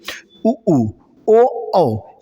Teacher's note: वे स्वर जिनका उच्चारण करने में हमारे होठ जो हैं वो गोल हो जाते हैं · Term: वृत्ताकार